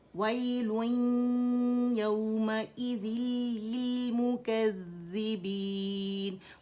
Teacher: हमने एक साकिन अदा करना है और दूसरी मुतहरिक कसरा के साथ जो ज़ाल है उसे अदा करना है और आगे गुजर जाना है, लिलमुकज़्ज़िबीन, और 4 काउंट्स मद आरिल